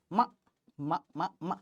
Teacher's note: तो भाई माँ का उच्चारण कहाँ से हो रहा है? होंठ से हो रहा है, इसलिए ये तो माँ ओष्ठ हो ही गया।